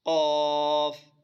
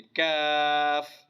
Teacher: جو قاف کا مخرج ہے وہی کاف کا بھی ہے، لیکن قاف موٹا ہے اور کاف باریک ہے۔ یہ والا کاف باریک ہے، اور اس کا مخرج وہی ہے جو قاف کا ہے، لیکن تھوڑا سا منہ کی طرف آنا ہے، تھوڑا سا منہ کی طرف آنا ہے۔